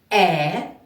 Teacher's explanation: ви відчули що цей звук виходить вільно ніяких перешкод в роті немає значить це звук голосний